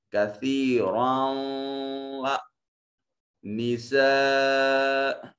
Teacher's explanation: حمزہ محل مد کے بعد حمزہ اسی کلمہ میں ہے تو یہ مد متصل کہلائے گی